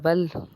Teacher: لام کو ہم نے نرمی سے پڑھنا ہے، باریک پڑھنا ہے، اور اس کے اوپر تشدید ہے، اس کا مطلب ہے ہم نے 2 بار لام کو پڑھنا ہے